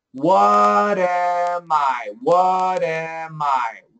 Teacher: so it's a flap T here so it's what am I and this m comes over here